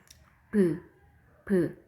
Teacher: 양 입술이 부딪혔다가 떨어지니까 바로 입술 소리죠